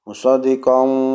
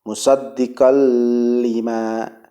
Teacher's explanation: idgham bi la gunnah ya. Maka tidak boleh didengungkan ya.